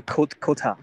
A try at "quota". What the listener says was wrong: Quota, yes, very good.